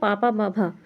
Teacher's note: पा वर्ग जो हमारा होता है वो ओष्ठ होता है।